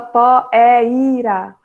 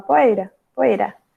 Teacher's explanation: O i fica quase só daquele toque. Então, o i nesse caso é uma semivogal. Ele vai ter um som mais fraco, ele precisa ficar juntinho da vogal para formar a sílaba.